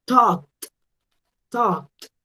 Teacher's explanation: Talk termina en K. Voy a pronunciarlo con una T.